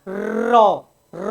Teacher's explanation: पूरी जीभ कंपन करती है, तो प्रकंपी या लुंठित व्यंजन।